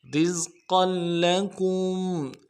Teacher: رز قل قاف کے اوپر تنوین ہے، قاف کو موٹا ادا کرنا ہے، تنوین کو آگے لام کے ساتھ ملانا ہے